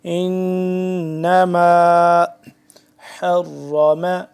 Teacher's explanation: حلق کے درمیانی حصے سے، حرم را موٹا